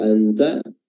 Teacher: Kalau anta, posisi lidah sudah berada pada makhraj huruf ta, yaitu ujung lidah bertemu dengan pangkal gigi seri atas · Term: ikhfa